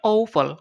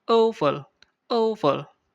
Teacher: Kalau dia ow ini untuk American English ya. Sementara yang eu untuk British, ya. Kalau dia suara ow itu kombinasi O dan U, ow.